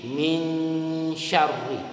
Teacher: samar-samar bunyi Nun masuk ke bunyi Sin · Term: Ikhfa